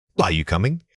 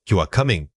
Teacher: When asking, Are you coming? your voice must rise at the end, signaling that you require confirmation from the listener.